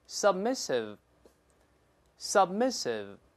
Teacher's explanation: 最后这个▁sev▁动作停留在上牙触下唇，这个▁v▁这个声音段